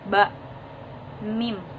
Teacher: ketika mengucapkan huruf ba huruf mim maka bibir bawah bersentuhan dengan bibir atas bak mim keduanya bersentuhan huruf dari mim itu bunyi nasal hurufnya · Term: Bilal